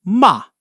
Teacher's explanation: And the 4th tone is the angry boss, ma. Sharp and falling like you're scolding someone. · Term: falling tone